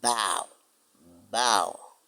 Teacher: Pour prononcer ba, vous fermez les lèvres, les deux lèvres, la lèvre supérieure et la lèvre inférieure. Vous fermez avant de pouvoir l'appeler.